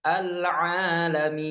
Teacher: ketika alif sebelumnya huruf ain berharokat fathah, maka kita panjangkan 2 harokat. Al-alamin. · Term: mat tabi'i